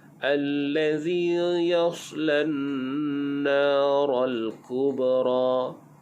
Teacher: Yaslan naral, ral, alif lam qamariyah, izhar. Kubra, ba di sini dibaca dengan qalqalah sughra